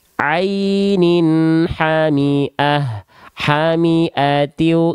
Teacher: Bertemu dengan huruf hamzah, ha kecil, kho, ain, ghain atau ha, tanpa disertai dengan dengung dan tanpa ditahan. Dibaca jelas, tanpa ditahan, tanpa disertai dengung. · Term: izhar halki